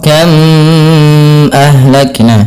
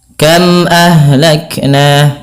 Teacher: M mati bertemu dengan Hamzah ini suara harus diperjelas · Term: izhar syafawi